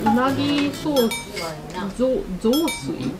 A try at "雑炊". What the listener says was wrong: 、 ソ ー ス じ ゃ な く て 雑 炊 。 あ と 雑 炊 じ ゃ な く て 雑 炊 。 あ の イ ン ト ネ ー シ ョ ン が ち ょ っ と 違 う 。